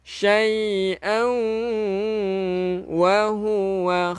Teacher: Tanwin tak selari. Bertemu dengan waw. Idgham bi gunnah. Idgham bi gunnah. Memasukkan beserta dengung.